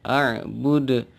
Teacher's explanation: huruf dal harakatnya domah tapi waqaf atau berhenti, maka dia dibaca memantul atau qalah, a'bud. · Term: qalqalah